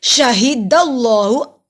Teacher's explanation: ہا حلق کے نچلے حصے سے ادا ہوتا ہے۔ اللہ کے نام کو موٹا پڑھیں گے، اللہ کے نام سے پہلے زبر ہے، اللہ کے نام پہ کھڑی زبر ایک الف کے برابر لمبا ہوگا۔